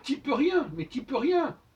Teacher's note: le U on entend beaucoup moins de U qu'on pourrait le croire